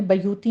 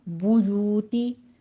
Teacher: फिल बुयूती में आपने होंठों को गोल कर लेना है, बा के ऊपर जमा है। यू में और गोल करते हुए आपने उसी तरह से 2 काउंट कर लेने हैं।